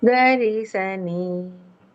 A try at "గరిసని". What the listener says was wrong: నీ కొంచెం దిగాలి గరిసని